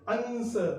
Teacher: तालव्य स हो, जिह्वा के तालु भाग से उच्चारण किया गया हो